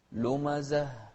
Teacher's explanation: شوف الهاء، نهمس في الهاء.